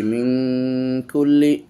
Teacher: নুন সাকিনের পরে কাফ ইকফার অক্ষর এজন্য গুন্না করছি